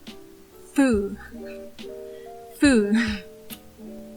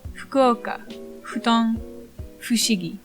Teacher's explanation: Keep your upper teeth close to your lower lip, like you would do to make a heavy fu sound, but you're aiming for more of an exhaled hu sound. But since your teeth are still kind of there, you get the hybrid fu.